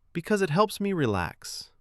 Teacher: Because it helps me relax. The pause before because makes the reason stand out without sounding heavy. >> Let's recap three keys.